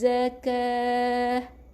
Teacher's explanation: bunyi dengan ha, bukan ta. Matikan dengan ha. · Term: Ha bulat